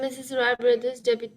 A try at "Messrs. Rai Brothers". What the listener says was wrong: Mrs. It is pronounced as Messrs. Messrs. Rai Brothers. Messrs. Rai Brothers.